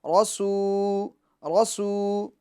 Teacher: واو مدہ ہے، واو ہے تو ہونٹوں کو گول کر لے